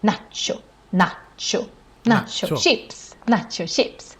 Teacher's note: we pronounce it, of course, the Swedish way, which is quite long vowels.